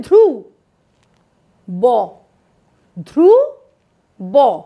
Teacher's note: ধ আর র এর মাঝখানে তো কোন দলের সীমানা নেই তাই এটা হলো যুক্ত ধ্বনি এর বন্ধনটা গুচ্ছ ধ্বনির তুলনায় অনেক দৃঢ় অর্থাৎ তোমাকে যদি প্রশ্ন